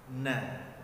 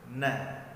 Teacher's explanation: kepala lidah kita bersentuhan dengan langit-langit yang bagian depannya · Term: huruf nun